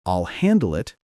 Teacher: keep your tone steady and low at the end, not rising.